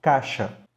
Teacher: caixa, que pode perfeitamente ser pronunciada só com A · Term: vogal única